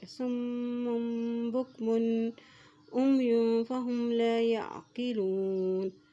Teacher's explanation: جب میم کے اوپر شد آ جاتی ہے تو وہاں پر غنہ بھی ادا کیا جاتا ہے